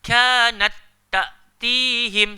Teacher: huruf ta pertama tu kita tak perlu nak hamaskan. Sebab hukum dekat sini bukan hamas. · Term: idgham